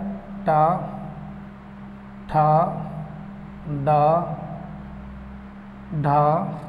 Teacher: 1 2 3 4 5 और ये बोले जाते हैं मूर्धा। तालु के पीछे कठोर भाग जिसमें जीभ उल्टी करके बोलते हैं, घुमा के। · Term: टा वर्ग